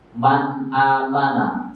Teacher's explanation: ada nun sukun bertemu dengan hamzah, maka suara nun sukunnya itu harus jelas. Man amana, nggak boleh nanti bacanya man amana. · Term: izhar